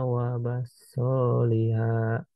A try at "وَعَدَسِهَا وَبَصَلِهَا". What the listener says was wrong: Wa adasiha wa basaliha. Soalnya nggak panjang, hati-hati.